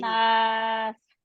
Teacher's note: ये सीन जो है इसमें सीटी पाई जा रही है, ये विस्लिंग साउंड। आप कहते हैं ना वो हिसिंग ऑफ द स्नेक जैसी होती है, जैसे सांप जो है वो ऐसे अपनी तरफ से तो बाजी मैं निकालती हूँ।